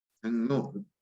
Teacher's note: 기억이 이응으로 비음성 있게 되면서 리을도 니은으로 비음성 있게 그러니까 서로 이렇게 영향을 주는 거죠. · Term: 상호 동화